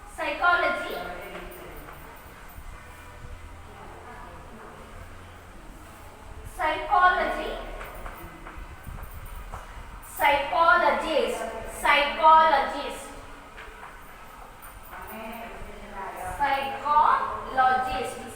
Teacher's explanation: Stress the third syllable from the end.